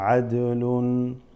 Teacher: this dal is slightly doubled, right, qalqala